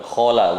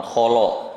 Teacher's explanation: Kho-nya tebal, lamnya tipis, qaf-nya tebal. Jangan sampai lamnya ikut tebal. Khola, ya tetap khola, bukan kholo.